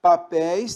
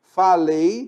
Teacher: Papéis tem o ditongo aberto, ei. Falei tem o ditongo fechado, ei.